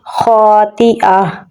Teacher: یہاں پر جزم آ جائے گی اور ہا رہ جائے گا، حمزہ کو ہا کے ساتھ ملائیں گے تو پڑھا جائے گا خاطئہ، ہا پہ سانس جاری ہوگا